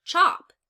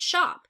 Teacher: you have to get that cha sound rather than that softer sh sound